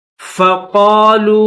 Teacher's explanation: واو کے پر چھوٹی مد ہے تو 3 الف کی مقدار میں اس کو کھینچیں گے